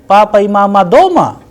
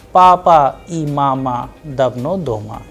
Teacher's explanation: the sound at the end is rising because I'm asking a question